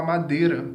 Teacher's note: tanto é que a gente fala madeira às vezes, né? O i quase desaparece. Então eu tenho uma vogal e depois uma semivogal.